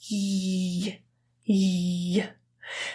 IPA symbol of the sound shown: j